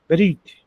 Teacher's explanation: quando vai falar essa palavra, o ezinho desaparece e fica Brit. Não tem problema falar esse é bem fraquinho, Brit. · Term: shevá